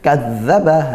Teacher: hati-hati dia zal ya, kadzdzaba suaranya masih ngalir begitu